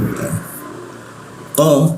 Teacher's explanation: huruf qo itu di siku tenggorokan. Lidahnya dinaikkan sehingga rongga udara terkunci dan tidak ada aliran udara.